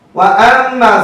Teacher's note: মিমের যে ওয়াজিব গুনাহ এটা করার সময় দুই ঠোঁট বন্ধ থাকবে